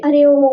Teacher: प्लुत स्वर जो होते हैं ना वो दीर्घ स्वरों से भी ज्यादा समय लेते हैं। बहुत ज्यादा समय लगता है इनको बोलने में।